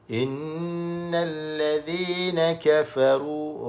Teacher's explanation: Kemudian ra itu bagi dhammah tebal, ra tafkhim.